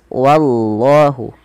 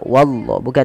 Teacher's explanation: Pada lafal wallah, usahakan jangan menebalkan wa, tapi dia wa-nya tipis